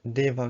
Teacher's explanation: So we have the voiced stops instead of the voiceless stops. G instead of K, and D instead of T.